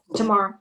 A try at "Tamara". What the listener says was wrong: Tamara, long A in the middle.